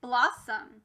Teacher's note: you'll notice that this changed from ah to uh we call that a schwa